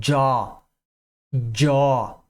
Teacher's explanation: Vibra a partir do A, tá? Agora, se você fizer um movimento de J aí, por exemplo, jaw, jaw, você vê que ele já vibra no início